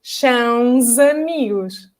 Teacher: Unless you have a vowel afterwards. So if the next word starts with a vowel, then it's going to sound like z.